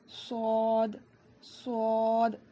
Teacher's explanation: زبان کی نوک کو نیچے کی 2 دانتوں کی جڑ میں لگانے سے صاد ادا ہوتا ہے